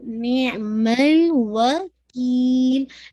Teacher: ٹھیک ہے، نون کی کسرہ واضح کرتے ہوئے آئین کو پرومیننٹ کیجیے گا، نعم الوکیل. میک شور لام کا جو ساؤنڈ ہے، لام کا سکون ہے وہ اینڈ پہ واضح ہو جائے